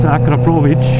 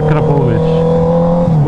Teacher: with a hard R and CH sound at the end